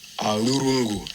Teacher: you're curling your lower lip back under your upper row of teeth, and you're just kind of flapping it forward. So it makes brief contact between the lip and the teeth. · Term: labiodental flap